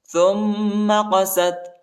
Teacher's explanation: تا کو میم کے ساتھ ملائیں گے اور میم پر غنہ کریں گے، قاف کو موٹا پڑھیں گے